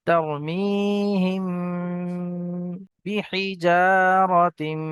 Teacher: তার মি, হা মিম জের হিম, তার মিহিম, মিম সাকিনের পরে এখানে বা এসছে, একে একফায়ে সাফাবি বলা হয়, গুন্নার সাথে একালি পরিমাণ গুন্না করে পড়তে হবে। তার মিহিম বিহিজারাতিম, বাজের বি, হাজের হি, বিহি, জিম আলিফ জাবার যা, আলিফের পূর্বে জিমের উপরে জাবার এসছে, আলিফ মাদ্দা একালি পরিমাণ টান দিয়ে পড়তে হবে।